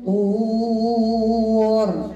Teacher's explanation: الطور كيف هي الراء مفخمه وصقفه لان للا يوجد سبب الترقيق خذوا ما